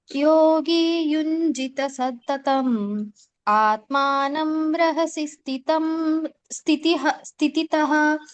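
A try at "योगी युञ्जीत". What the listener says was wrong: ಮಾತಾಜಿ first line ಯೋಗಿ ಯುಂಜೀತ, ಜೀ ದೀರ್ಘ ಇದೆ. ಯೋಗಿ ಯುಂಜೀತ ಸತತಂ ಆತ್ಮಾನಂ ರಹಸಿ ಸ್ಥಿತಃ.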